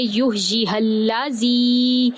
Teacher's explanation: زی جائے مدہ، اس کو ہم 3 سے 5 الف کے برابر لمبا کریں گے، اس کے اوپر مد بھی ہے.